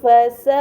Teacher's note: ini dinamakan mad muttasil. Karena mad bertemu dengan hamzah dalam satu kata, maka harus dibaca panjang selama 4 atau 5 harokat